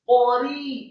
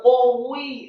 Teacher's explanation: Ra-nya yang kasroh dibaca tipis, kasroh dua harokat karena setelahnya ada ya sukun. · Qafnya dibaca tafkhim, fathah satu harokat, kemudian ra-nya dibaca tipis, qari, jangan qawi, salah.